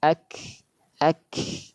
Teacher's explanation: Kaf yang sukun hamasnya lebih kelihatan, lebih terdengar.